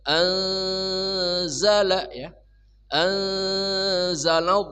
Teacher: nun mati bertemu zai namanya ikhfa hakiki. Samar dan dengung.